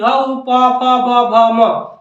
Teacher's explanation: यानी कि ओट से इसका उच्चारण होता है · जब तक ओठ नहीं सटेगा तब तक यह उच्चारण इसका नहीं होगा